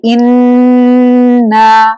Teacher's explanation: गुन्ना करते वक्त नाक के बासे में 1 काउंट होल्ड होगा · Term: नून मुशद्दद